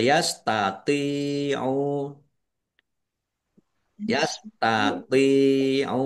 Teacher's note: tok ya dibaca agak berat ya jangan sama dengan tak